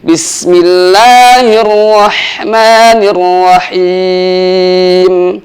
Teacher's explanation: menyamarkan bunyi huruf ro sehingga getarannya tidak terlalu kuat dan juga tidak hilang Bismillahirrahmanirrahim dan yang terakhir hati-hati ketika di huruf H yang terakhir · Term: getaran di huruf ra